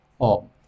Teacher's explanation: ये ओ, इसका मतलब ये है कि ये जो ओ की मात्रा है, ये ओ की जो मात्रा है, ये थोड़ी लंबी खींच रही है और फिर जाकर के ये मैं ध्वनि प्रकट हो रही। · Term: प्लुत स्वर